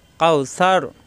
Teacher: কাউসার কোনো টান নেই, কাউ লিনের হরফ, জবরে বামে অ সাকিন